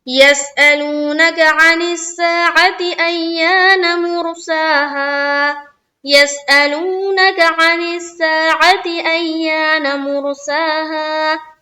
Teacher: हम लोगों ने क्या पढ़ा था कि खड़ा जबर बराबर होता है अलिफ मद्दा के। खड़ा जबर को एक अलिफ की मकदार के बाकदर खींचकर पढ़ेंगे